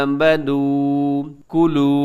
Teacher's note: यहाँ खड़ी ज़बर है, लंबा कीजिएगा, वाव मद्दा है, इसे भी लंबा कीजिएगा। आमनू कुलू, वाव मद्दा है, वाव साकिन से पहले पेश, वाव मद्दा।